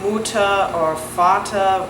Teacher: And then the R at the end of the words, so at the end of Lehrer, or you'll have the end of Mutter or Vater, which it's not like a strong R, it's like an R that disappears.